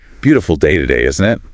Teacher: Emulate the tone, the falling intonation, the casual rhythm. · Notice how isn't almost sounds like one word.